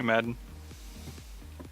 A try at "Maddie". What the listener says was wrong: I say Maddie. Mad D, and I just don't try to say the H or N. It's Maddie.